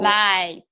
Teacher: you've blocked any air from coming through and you forced it to come out through your nasal passage